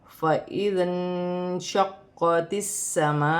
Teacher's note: قاف مشدد ہے، جماؤ کے ساتھ سختی کے ساتھ ادا کیا جائے گا، تا کو سین کے ساتھ ملا کر پڑھا جائے گا۔ · بڑی مد بھی مد متصل ہے، اسے 5 الف کی مقدار تک کھینچ کے پڑھیں گے